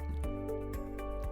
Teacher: the word later, has stress on the first syllable, which is lay.